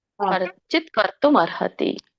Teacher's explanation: ಅರ್ಕಾವಳಿ ಇದ್ದಾಗ ಮೊದಲು ರ ಹೇಳಬೇಕು ಆಮೇಲೆ ತ ಹೇಳಬೇಕು